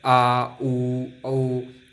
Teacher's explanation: पाश्चर जो जीभ के पीछे से बोले जाते हैं